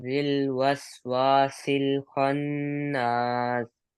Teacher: آخر میں سین کی سیٹی. خناس غنہ پورا رکھنا ہے، غنہ نہیں چھوڑنا.